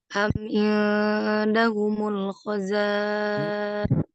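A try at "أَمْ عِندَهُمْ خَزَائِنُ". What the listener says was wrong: Am indahum khoza. Bukan humul khoza, hum khoza.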